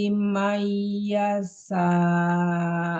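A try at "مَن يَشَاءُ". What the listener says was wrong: Shinnya tebal. Mayyasha. Mayyasha. Jangan yas, tapi yasha. Mayyasha. Yasha, ya-nya pendek.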